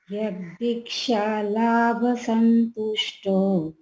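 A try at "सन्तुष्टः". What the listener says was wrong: Santushtaha. Cut the okara. And put. আরে ওখানে বিসর্গ আছে তো এই এই ওকার আছে তো ওকারটা কেটে বিসর্গ লাগাও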